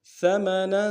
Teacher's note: ثمنا میں سا کو باریک ادا کریں گے، نون کے اوپر تنوین غنہ کریں گے